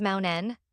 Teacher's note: The air that would normally push through the mouth for the T, instead gets redirected through the nose with the N · The T gets absorbed. What you hear instead is something like cur-en with a faint catch just before the N arrives. · instead of releasing a burst of air to produce the T sound, it transitions directly into the N by simply releasing downward. The T gets stopped, compressed into a fraction of a second, and then discharged through the nose as the N takes over. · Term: nasal release